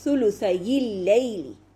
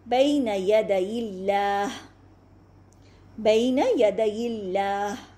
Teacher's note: وصل میں پڑھیں گے تو اس یا لین کو کسرہ دے دیا جائے گا